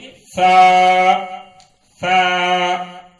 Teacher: ثا باریک اور نرم ہوتا ہے